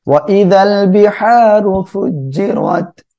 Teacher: ফুজ্জিরাত, র এর উপরে জবর রয়েছে, এখানেও মোটা করে পড়বো।